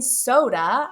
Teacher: I hear the last syllable representing the schwa sound. sod. That's why we have that uh at the end of the word.